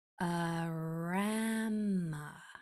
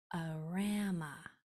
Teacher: Arama, accented in the middle.